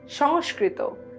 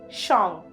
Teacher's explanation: In Bangla, it is pronounced as the velar nasal